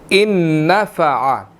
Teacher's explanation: ان نون مشدد ہے, یہاں پر ہم نے غنہ کرنا ہے